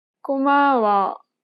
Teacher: She kept the same pitch for the first and second syllable, but lowered the tone for the last syllable.